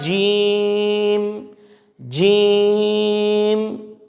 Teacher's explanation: اسی طرح جیم، جیم، اس کو ہم نے اچھی طرح سے اس انداز سے ادا کر سکتے ہیں کہ زبان کا جو درمیان ہے وہ ہم نے اوپر کی طرف لگانا ہے